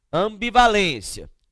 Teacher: Percebam que aqui o M, ele indicou unicamente som o quê? Nasal, a vogal A.